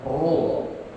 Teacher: Kalau doma juga tebal, ru, monyong kemudian ditebalkan